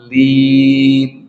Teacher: Lamnya yang ditasydid dan panjang. Dha-nya yang panjang 5 harkat. Kemudian setelah panjang itu ditekan ya sekitar 2 harkat ke lam, bunyi lamnya. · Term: Lamnya tasydid